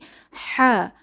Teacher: কণ্ঠনালীর মাঝখান থেকে বাতাসকে চেপে উচ্চারিত হয়